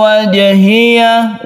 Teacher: Kalau di akhir kalimat yang diwaqafkan atau kita di akhir ayat itu disebut qalqalah kubra, tapi yang ini adalah qalqalah sughra. Sughra artinya kecil, bahwa membacanya itu biasa saja. Yang penting kita pantulkan jimnya.